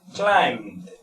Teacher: Hay una cosa importante aquí que a pesar, por ejemplo, que esta palabra se tiene que pronunciar como una D, realmente, no sé si más adelante puedo explicar un poco, la B después de la M no se pronuncia